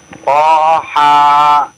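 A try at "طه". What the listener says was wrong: Toha, haknya hak besar ya, jangan hak kecil ya.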